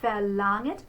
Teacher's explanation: Notice with the R, I don't flip the R and it's pretty much omitted.